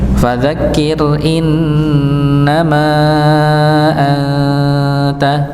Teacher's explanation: Innama ada nun bertasydid maka didengungkan. Ini didengungkan. Ditahan dulu. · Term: nun yang bertasydid